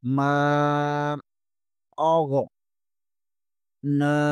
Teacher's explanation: نون کے اوپر کھڑا زبر ہے، اسے بھی ایک الف کے برابر کھینچیں گے